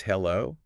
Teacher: if you make the o really rise, hello, it can sound like surprise or even doubt, like, are you talking to me?